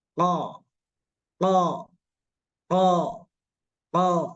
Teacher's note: membuka mulut qo qo qo qo nah tapi ini ada tapinya dalam melafalkan Q ini jangan sampai ditarik sekali ke belakang karena kalau ditarik ke belakang Nanti dia itu wilayah huruf gho